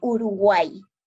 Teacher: hay que tomar en cuenta que este es una excepción porque la y al final de la oración nosotros lo pronunciamos como una i latina entonces toma la función de una vocal cerrada que sería la